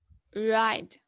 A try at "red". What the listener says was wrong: No, I can hear you saying like ride. Red. Eh. Can you say the word, the sound eh?